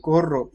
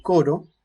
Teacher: vibrante múltiple con la vibrante simple se reconocen como fonemas distintos porque forman un par mínimo